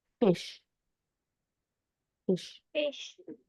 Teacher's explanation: bottom of the lip touches the upper teeth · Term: labiodental sounds